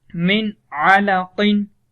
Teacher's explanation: نون کو ہم نے چھپایا نہیں ہے، نون کو واضح کیا ہے، اس لیے اس کو اظہار کہا جاتا ہے۔